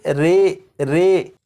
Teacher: امالہ کی راء کو اردو کے لفظ قطرے کی راء کی طرح پڑھیں گے، یعنی ری نہیں بلکہ رے پڑھیں گے